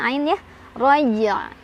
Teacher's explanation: sama ketika ee wasal ya jadi pantulannya harus tetap ada dan huruf terakhir Ain harus tetap dibaca ya yaitu dari tengah tenggorokan